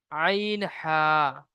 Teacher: হলকের বা কণ্ঠনালীর মাঝখান হতে উচ্চারিত হয় আইন হা